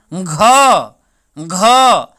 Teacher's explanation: घ का जो उच्चारण स्थान होता है किस चीज से होता है, आपका कंठ से होता है।